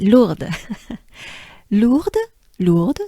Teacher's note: here we have mainly the sound oo and we have the french r